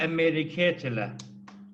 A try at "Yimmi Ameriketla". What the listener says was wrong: Yimmi. Yimmi Ameriketla. Almost. Take out the E in America. Ameriketla. Yeah, but you don't have to say that. Just Yimmi.